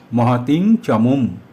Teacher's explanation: চ বর্গের পঞ্চম বর্ণ ইয়, তাই অনুস্বারের উচ্চারণ এখানে ইয় হলো, কারণ অনুস্বারের পরে চ আছে